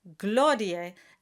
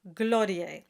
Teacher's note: you have to accent the first syllable, gloriae, and not gloriae.